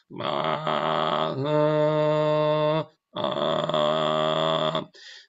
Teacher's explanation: Ah, en este caso, a una vibración regular, se alterna otra vibración más amplia que eh da la voz otra frecuencia más baja la fundamental, abajo de la fundamental. Entonces son dos sonidos, uno de la fundamental, ah, y otros sonidos a la mitad de la frecuencia de la fundamental. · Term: vocal fry, voz frita